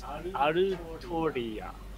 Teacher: in Japanese they don't have an L sound, they replace it with R sounds